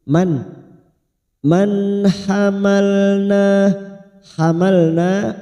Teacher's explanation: nun sukun bertemu ha Idhar halq kita baca jelas tanpa mendengung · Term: idhar halqi